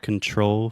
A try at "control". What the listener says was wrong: Better, yeah. Just make sure to articulate that final L.